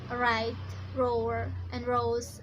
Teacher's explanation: the tip of the tongue slightly bends backwards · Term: alveolar retroflex